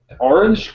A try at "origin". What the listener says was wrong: Origin. You said orange.